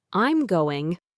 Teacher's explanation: with a voice that falls at the end, it signals a simple definite statement or a firm answer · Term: falling intonation